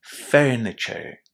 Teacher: That sound is the soft English R sound, where your tongue is not touching your palate and it kind of curls back a little bit